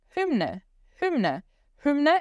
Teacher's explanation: O Y vai ter som de U, umlaut, que é a boca de U falando I. Então vai ficar hü.